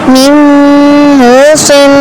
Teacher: صاد پر اخفا کرنا ہے اور تفخیم بھی کرنی ہے